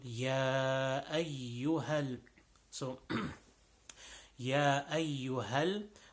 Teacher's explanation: The ya over here is a little bit longer than the normal short stretches.